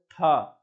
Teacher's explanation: जीभ आपकी टक से ऊपर लगती है दांत में